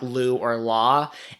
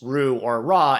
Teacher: In the Japanese language, they don't actually have the L sound, like Lu or La, and so they always use Ru or Ra instead.